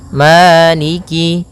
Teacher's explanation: fathah bertemu dengan alif panjangnya dua harakat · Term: madii